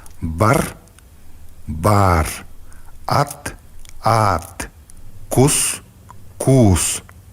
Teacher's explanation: В зависимости от длительности якутские гласные делятся на краткие и долгие. Долгие гласные произносятся с растянутостью, примерно в два раза дольше, чем короткие.